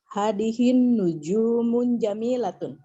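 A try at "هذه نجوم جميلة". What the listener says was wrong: Hadihin nujumu tanpa tanwin. Hadihin nujumu jamilatun.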